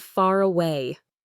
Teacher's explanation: The R sound at the end of the first word actually connects right to the vowel sound at the start of the next word, making them flow together seamlessly. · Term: linking R